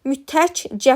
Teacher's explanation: Amma mütəkkə sözündə mütəkcə formasında birinci samit olduğu kimi qalır, ikincisi cingiltili qarşılığına keçir